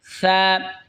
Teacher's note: সা জিহ্বার আগা সামনের ওপরের দুই দাঁতের আগার সঙ্গে লাগা উচ্চারণ হবে সা, নরম হবে সা।